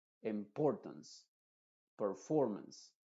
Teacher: Así que en las siguientes palabras también, las que terminan en ance, esa E normalmente en inglés al final de una palabra no se pronuncia, pero esa A se está pronunciando como una schwa, diríamos importance. No es importance con una A muy abierta, sino con una A muy cerrada que es una schwa